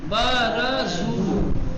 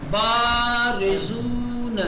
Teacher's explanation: آپ کو با کو اس سے دو گنا بڑھانا پڑے گا جتنا آپ نے پہلے کو پھیلایا تھا۔ · فاتحہ چھوٹا ہونا چاہیے، کم کھینچنا چاہیے، اور لمبا الف کو بڑھانا چاہیے، لمبا کرنا چاہیے۔